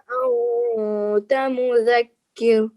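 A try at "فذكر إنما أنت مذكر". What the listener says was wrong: फज़क्किर, केर नहीं कहना, फज़क्किर इन्नमा अंत मुज़क्किर, फज़क्किर इन्नमा अंत मुज़क्किर, ये लिखा है ना फज़क्किर, आगे लिखा हुआ क़िफ़ यानी ठहर जाइए, ये स्टॉप साइन है, क़िफ़। फज़क्किर इन्नमा अंत मुज़क्किर,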